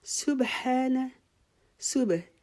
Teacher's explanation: سین کو باریک کریں گے